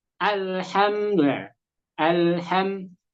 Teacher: Seharusnya di sukun itu dia ringan bukan berat. Bukan dihentak-hentak.